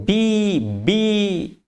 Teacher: When you say B, upper lip and lower lip touches each other and try to block the air